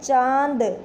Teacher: सिर्फ नाक से ध्वनि नहीं निकली है, नाक और मुंह से दोनों से ध्वनि निकली है। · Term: चंद्र बिंदु